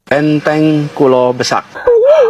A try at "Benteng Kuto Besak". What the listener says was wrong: Bukan Benteng Kulo Besak Pak, tapi Benteng Kuto Besak. Bukan kulo Pak, tapi kuto ya Pak. Kalau kulo niki yang Jawi artinya saya ya Pak. Itu kuto, kuto besar itu kota besar.